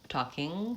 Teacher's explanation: You want to make that in the back of the mouth close off, and you want to make sure that your tongue is back, talking rather than talkin'. You don't want your tongue going forward and making an N. And then you also want to make sure that you release, stop your voice, talking, before your tongue releases.